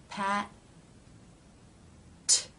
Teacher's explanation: And the second part, the tongue releases and the air comes through the closed teeth